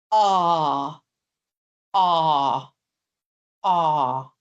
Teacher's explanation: It's the um vowel that we sometimes see in English plays um when someone goes to the doctors to the GP and the doctor says open your mouth and say a so that's where we are a very open long vowel